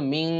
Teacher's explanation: এই নুন সাকিনের পরে শিন থাকলে ইকফা করতে হয়